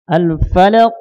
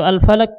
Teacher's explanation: Ketika kita mengucapkan qaf yang sukun ini, maka kita ihtizazu, kita goncangkan, kita qalqalahkan, kita pantulkan, sehingga ada terdengar suara nabrah, tekanan. Al-falaq. Jangan al-falaq, ya.